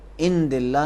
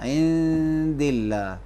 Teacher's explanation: کیونکہ نون ساکن کے بعد دال آیا ہے. یہ حرف دال سے پہلے والا نون حرف دال کے مخرج میں چھپائیں گے